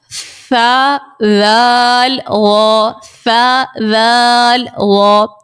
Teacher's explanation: ثا ذال اور غا ان 3 حروف کو ہم نے نرمی سے پڑھنا ہے. ان 3 حروف میں ہم نے ہرگز سیٹی نہیں نکالنی ہے اور نہ ہی ہم نے ان میں سختی کر کے پڑھنا ہے. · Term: نرمی والے حروف